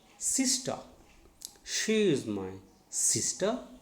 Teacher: stress should be on first syllable